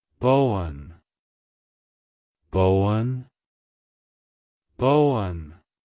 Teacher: emphasize the first syllable B and then smoothly transition into the one sound avoid adding an extra emphasis on the one at the end